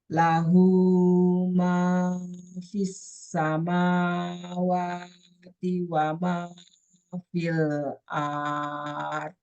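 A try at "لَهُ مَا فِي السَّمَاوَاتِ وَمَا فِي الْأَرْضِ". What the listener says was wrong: Artnya pendek.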